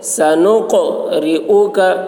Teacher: را کی آواز باریک ہوگی، کاف کی آواز بھی باریک